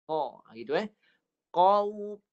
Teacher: Pangkal lidah naik, lekat ke anak tekak.